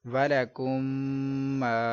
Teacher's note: تو ادھر آپ دیکھ سکتے ہیں کہ میم ساکن کے بعد دوسری میم ہے، تو ادغام شفوی کا قاعدہ ہونے کی وجہ سے ہم نے گنہ کیا